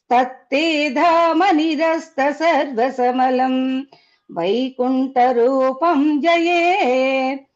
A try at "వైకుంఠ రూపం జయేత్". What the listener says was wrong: వైకుంఠ అన్నప్పుడు ఒత్తి వినిపించలేదు. తర్వాత రూపం జయేత్ అన్నప్పుడు ఇంకా పెదాలు కలుపుతున్నారేమో అని సందేహం వచ్చింది. పెదాలు కలిపేస్తున్నారు. రూపం జయేత్ అన్నప్పుడు పెదాలు ఇప్పుడు అంజనం అంటాం కదండి. అంజనం అంజనం అనండి ఒకసారి. అలాగే రూపంజ రూపంజ